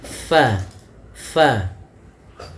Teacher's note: huruf fa ada sedikit furjahnya, ada sedikit ruang yang kosong yang mana untuk mengeluarkan nafasnya. · huruf fa salah satu sifatnya yaitu dia hams, mengalirnya nafas